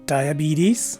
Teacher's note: the letter e is a long e and the letter s takes a z sound as in zebra whereas in the second variation the letter e takes a swa